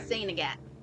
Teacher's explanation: And it's usually, they don't even pronounce the T in saint